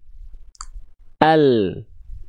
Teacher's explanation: lam dilafalkan dari tepi lidah bagian depan yang kiri menyusur sampai ke ujung lidahnya. Tepi lidah bagian depan yang kanan menyusur sampai ke ujung lidahnya, disentuhkan ke langit-langit atas depan kita.